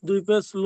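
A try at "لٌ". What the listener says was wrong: হ্যাঁ, আবার লাম আলিফ বলছেন কেন? আলিফটা বলতে হবে না, আলিফটা তো বাড়তি অক্ষর, ওটা লাম দু পেশ লুন। এখানে তো আলিফটা ওই দু জবরে আমি লাম দু পেশ লুন লিখে দেখাচ্ছি, দেখেন এখানে তো আমি লেখা নেই বলে আপনাদেরকে ওই ওই লেখায় পড়াচ্ছি, আসলে এটা এই লাম দু পেশ লুন। এটা তো শুধু দো জবরের সময় এই লামের পরে আলিফটা আসবে, এটা বাড়তি অক্ষর পড়া যাবে না।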